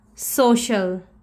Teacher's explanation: we will use long vowel sound we will say oh just like the actual name of the vowel